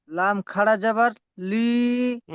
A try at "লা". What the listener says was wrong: লাম খাড়া জবরের আগে হয়ে গেল, লি হবে কেন? লাম খাড়া জবর আলিম মাদ্দার মতো হবে। খাড়া জবর লা।